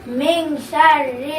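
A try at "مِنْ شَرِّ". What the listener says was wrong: একটু লম্বা করতে হবে। মিং।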